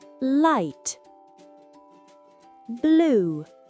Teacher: L'air coule de manière fluide autour de la langue. Le bout de la langue est bien appuyé derrière les dents du haut. En fin de mot, le L est souvent plus sombre en anglais.